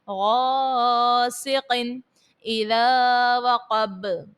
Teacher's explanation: قوف جو حرف مستعلیہ کا ہے اس کو پر پڑھیں، غاسقن، غین اور قوف دونوں کو پر پڑھنا ہے،